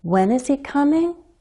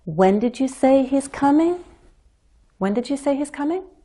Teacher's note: so I have more syllables to work with and I can keep climbing to a higher pitch